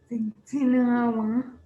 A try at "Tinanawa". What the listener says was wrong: There's two NAs.